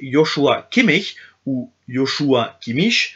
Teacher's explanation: Le CH, quant à lui, peut se prononcer HIE, un CH collé contre la langue